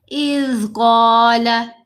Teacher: اذ زال ساکن ہے تو ہم نے زال کی آواز کو ہلانا نہیں ہے